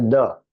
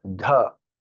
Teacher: Air has to come out, it is Mahapran.